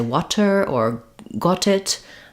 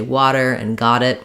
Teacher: Indian English speakers might say water or got it um and American speakers would say water and got it we would use flaps there